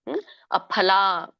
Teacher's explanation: ಇಲ್ಲಿ ಅಫಲ ನೋಡಿ ಫ ಅಲ್ಲ ಫ ಅಂದಾಗ ಬಾಯಿನ ನಮ್ಮ ತುಟಿಗಳು ತಕೊಳ್ಳುತ್ತೆ ಎರಡು ನಮ್ಮ ತುಟಿಗಳು ಕೂಡಬೇಕು ಆಫ ಹೇಳಬೇಕು